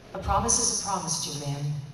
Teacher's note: it was just me with a little bit of breathy in there